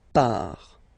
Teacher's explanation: Final T not pronounced.